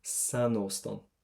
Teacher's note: We're going to add in a little N to make it roll off the tongue an awful lot easier. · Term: liaison